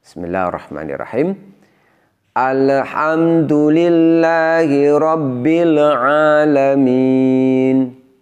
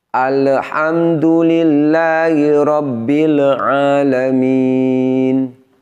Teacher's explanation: bunyi pantulan perhatikan sekali lagi ini bacaan yang tidak seharusnya alhamdulillahirobbilalamin huruf lam ini bukanlah huruf Qalqalah namun seringkali jika tidak hati-hati bunyi lam sukunnya ada bunyi pantulannya